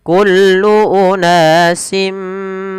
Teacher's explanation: maka tanwinnya dimasukkan ke huruf mim sambil ditahan. Kullu unasim, awalnya kullu unasin mashrabahum, tapi karena bertemu mim, tanwinnya dimasukkan ke huruf mim.